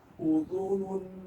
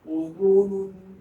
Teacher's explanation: بہت گول رہیں گے یہ پڑھتے ہوئے کیونکہ 3 حروف پیش والے ہیں